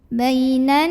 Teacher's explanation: ke Nun mainan nun-nya adalah ghunnah musyadadah karena Nun bertasydid maka cara membacanya didengungkan nun-nya ditahan bunyi an nya kurang lebih 2 harokat